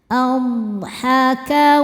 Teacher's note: Dod punya sifat yang tidak memiliki lawan. Ya, ciri khas dari dod adalah istidalah yaitu memanjang makhrajnya · Ba hukumnya qalqalah sugro karena ba sukunnya asli dan berada di tengah bacaan. Cara bacanya memantul dengan pantulan yang kecil. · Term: qalqalah sughra